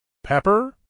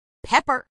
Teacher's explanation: acentuación en la primera sílaba